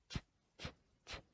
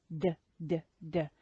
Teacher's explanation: we make the t and d sounds using the blade of the tongue against the alveolar ridge. So the blade of the tongue is this part here, just behind the tip of the tongue. · So the voiceless t, t, t, and the voiced d, d, d. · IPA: /t/